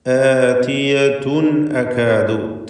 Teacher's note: തൻവീനും ശേഷം ഹംസയും വരുന്നു. ഇൽഹാർ ഹൽക്കി നൽകി മണിക്കാതെ വെളിവാക്കേണ്ടതാണ്. അപ്പോൾ ഇന്നസ്സാഅത ആതിയതുൻ അകാദു, ഇതുവരെയും തഫ്ഖീം ചെയ്യേണ്ടതായ ഒരു ഹർഫ് പോലും വന്നിട്ടില്ല.